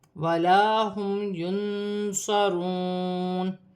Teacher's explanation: غنہ نہیں ہوگا، نون ساکن کے بعد صاد آ رہی ہے، صاد حرف اخفا میں سے ہے، نون ساکن میں اخفا ہوگا